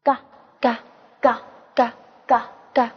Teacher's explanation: 它喉音也就是舌根音